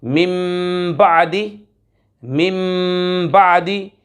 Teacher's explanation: नून साकिन और तनवीन को मीम से बदल कर इख्फ़ा करके पढ़ेंगे यानी गुन्ना करेंगे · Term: इक़लाब